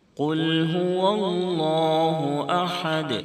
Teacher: قل هو اللہ احد، اللہ کے لام سے پہلے زبر ہے، اس لیے اللہ کے لام کو موٹا کر کے پڑھیں گے۔ ہا کو درمیانی حلق سے بالکل صاف ہوا کی طرح آواز نکال کر ادا کریں، حلق سے کھڑکڑاہٹ جیسی آواز نہیں نکلے گی